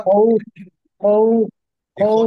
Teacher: খটা, খটা হলফের হলফের কি? হলকের মাঝখান থেকে উচ্চারিত হবে, তাহলে এটা হবে খাউফ, স্পষ্ট করে।